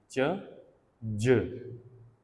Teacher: First block है और उसके बाद friction है. So it's an affricate.